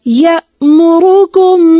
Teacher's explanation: हमजा को वाज़े करें इसको या मुरुकुम नहीं पढ़ेंगे